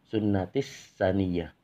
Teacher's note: sunnatis saniyah berhenti 2 harokat karena nun yang bertasdid, yaitu bacaan hunna.